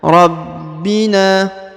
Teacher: Huruf ba berharokat i, di atasnya terdapat tanda tasdid, maka ditahan dan ditekan